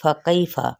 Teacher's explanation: फ़ा की हरकत को लंबा नहीं करेंगे। कैफ़ा या लीन का कायदा, फ़ा की हरकत को आगे मज़ीद, ये फ़ा पे ज़बर है फ़तहा, तो इसको भी लंबा नहीं करेंगे।